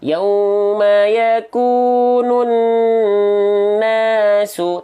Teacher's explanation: Tahan dua harokat gunnah. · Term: dua harokat kadar gunnah